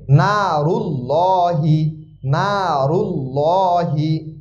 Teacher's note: লাহি লর মতন উচ্চারণ হবে অর্থাৎ একটু মোটা হবে